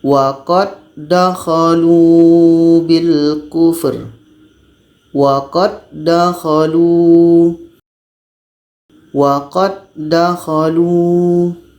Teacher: karena terjadi di sini hukum Idam mutamasilan maka bunyi huruf da yang pertama ini masuk kepada huruf da yang kedua · jadi bunyi qalqalahnya dihilangkan